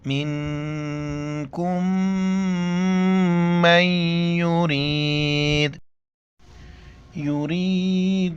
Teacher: منکم نون ساکنہ اخفا کریں گے ناک میں آواز چھپائیں گے اور کاف کو میم کے ساتھ ملائیں گے.